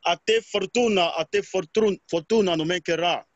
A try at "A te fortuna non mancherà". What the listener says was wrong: Okay, but if you realize you're jumping on some letters. For example, fortuna. Fortuna is like, it's not important for you. A te fortuna, a te fortuna.